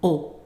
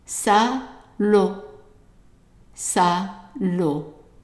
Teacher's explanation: the AU in French is pronounced as an open O